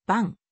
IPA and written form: baɴ (バン)